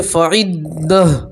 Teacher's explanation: گول تا کو گول ہا سے بدلیں گے اور ہا کے اوپر جزم پڑھیں گے